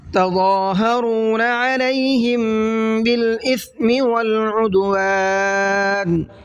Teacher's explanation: تضا کے ضا کو منہ بھر کے پڑھنا ہے، اور ہم میم ساکن کے بعد میں با ہے، اخفا شفوی کا قاعدہ ہے، غنہ کر کے پڑھیں گے۔